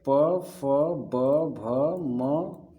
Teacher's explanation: ठीक है, उसके बाद ओष्ठ व्यंजन। ठीक है, इन वर्णों का उच्चारण ओठ के स्पर्श से होता है।